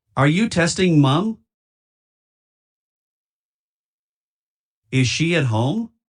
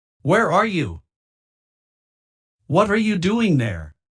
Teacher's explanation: las primeras dos la entonación es ascendente, mientras que las segundas dos la entonación es descendente